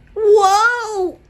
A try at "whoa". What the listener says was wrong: You have to drag out the O, like whoa.